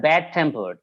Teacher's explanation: the stress will be on the second part of this word, that is tempered